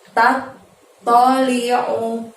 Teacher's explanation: Mengucapkan u di sini karena huruf ain, maka dengan tenggorokan kita, bukan dengan mulut kita. Jadi mulut tidak usah dibuka lebar-lebar.